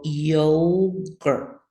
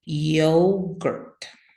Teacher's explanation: it's easy to uh hear the schwa sound there at the end